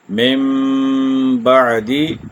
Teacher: نون ساکن آ رہا ہے، اس کے بعد با ہے تو یہاں اقلاب ہوگا، تو اس کی مقدار 1 الف یا 2 حرکات ہے